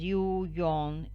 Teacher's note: the lips are generally neutral or spread but anticipate the lip rounding of the following vowel in cases such as you yawn etc the labial velar approximant